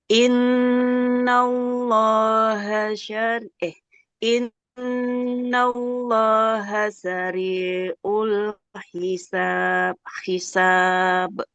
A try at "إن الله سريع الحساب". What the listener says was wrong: Ainnya jangan kayak Hamzah ya. Tidak sari'ul. Sari'ul hisab. Kemudian sari'un. Ainnya jangan jadi hamzah.